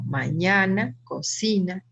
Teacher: tienen su sílaba tónica en la penúltima es decir que recae la fuerza de voz en la penúltima sílaba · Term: palabras graves